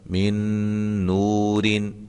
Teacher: یہاں نون ساکن کے بعد نون ہے، لہذا یہاں بھی ادغام مع الغنہ ہوگا